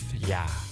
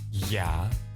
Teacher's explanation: Think of it as ㅣ plus ㅏ. Pronounce it as one syllable. You may naturally make the Y sound a little too long at first.